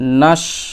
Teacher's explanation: তারপর দেখেন ওয়াও যাবার ওয়া, নুন, এখানে এবার আছে শিন, এখানে কিন্তু সিন নাই, শিন আছে, এই শিনটা উচ্চারণ করবেন জিহ্বার মধ্যভাগ তার বরাবর উপরের তালুতে লাগিয়ে, ওকে, জিহ্বার মধ্যভাগ সোজাসুজি উপরের তালুতে লাগাবেন, দিয়ে শিন এরকম উচ্চারণ করবেন।